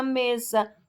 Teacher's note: O me é a sílaba tônica, por quê? Porque é pronunciada com maior intensidade. O sa é a sílaba átona, por isso tem o som mais fraco.